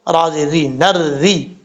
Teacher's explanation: را کے نیچے زیر ہے اس لیے را کو بریک پڑھا جائے گا